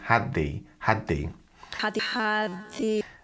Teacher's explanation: the D is released into the th so it becomes had the had the had had the and